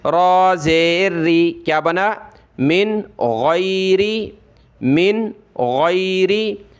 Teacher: را پہ زیر ہو تو را کو پتلا کیا جاتا ہے · جو بھی ریڈ ہیں لال لال یہ سارے حروف حلقی ہیں، یہ بتا رہے ہیں کہ حروف حلقی آیا ہوا ہے، آپ نے نون پر غنہ نہیں کرنا ہے